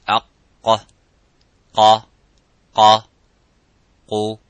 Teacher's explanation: And the letter qaf, it has an echoing sound. It is harf mufakham, it is a little bit strong. So when we pronounce the qaf, we try to pronounce it audibly, and as it is qa, by opening slightly the lips vertically and making that sound and echoing by saying qa.